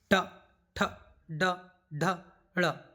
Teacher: ट वर्ग का उच्चारण स्थान कौन सा है मूर्धा